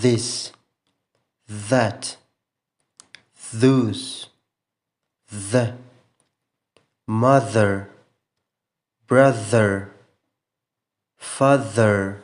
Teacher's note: صرف غږ زموږ د مرۍ څخه راوځي په دې ډول سره که چیرې خپل لاس خپل په مرۍ باندې کښېږدو نو یو ډول لړزه خپل په مرۍ کې محسوسوو · ژبه په عین شکل زموږ د خولې څخه لږ څه راوتلې او د لوړو غاښونو په مشلولو سره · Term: voiced th